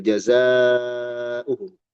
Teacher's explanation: Jazaa'uhum mad muttasil, jazaa'uhum dibaca panjang.